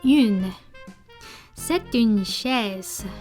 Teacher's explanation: En su pronunciación, olvídate de la E final y pronuncia la primera U como una I poniendo labios de pez